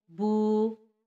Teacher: بو، بو واو ساکن ہے، با پہ پیش ہے تو واو مدہ ہوگی۔ واو مدہ کو ایک الف کے برابر لمبا کرتے ہیں